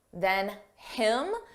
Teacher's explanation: Notice how you don't hear the H on him